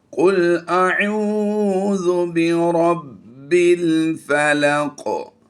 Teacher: कुल अऊज़ु, ऐन वाव पेश, वाव मद्दा है, लंबा करके पढ़ेंगे इसे